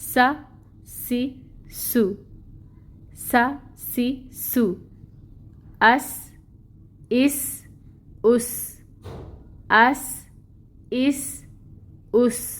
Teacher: سین بھی باریک حروف میں آتا ہے اور اس میں بھی سٹی کی صفت ہے. سٹی لے کے آئیں گے اور باریکی سے ادا کریں گے.